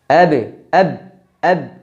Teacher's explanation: ba yang kedua adalah syiddah selain nafasnya tertahan juga suaranya ditahan berhenti langsung suaranya